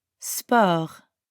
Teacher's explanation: The French word sport sounds super similar to the English word sport, but we don't pronounce the T at the end. And we use that French R sound again.